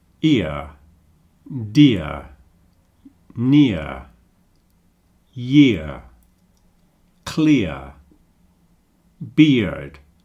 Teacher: You'll notice that we don't really pronounce the R on the end of a lot of these words, at least in an English accent. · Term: diphthong ear